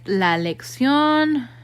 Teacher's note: word like la lexion in that last syllable and notice again you have that accent because you're stressing the last syllable not the second to last syllable